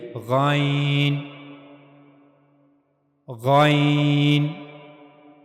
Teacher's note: जबकि गाइन इसके ऊपर एक नुक्ता है। और गाइन यह भी पुर हरूफ में से एक हर्फ है। इसको भी हमेशा पुर यानी मोटा करके पढ़ा जाएगा। गन और गैन की अदायगी के लिए गले का ऊपर वाला हिस्सा इस्तेमाल होगा।